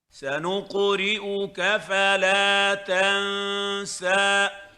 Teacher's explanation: Here we have a qaf with sukun preceded by a dhamma. It is heavy on the 3rd scale.